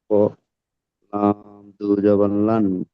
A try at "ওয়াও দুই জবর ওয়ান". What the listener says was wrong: আরে ওয়াও দুই জবর ওয়ান এটা বলেন। ওয়াও দুই জবর ওয়ান বলছি, আপনি লান বলছেন কেন? ওয়ান, ওয়ান ওয়ান,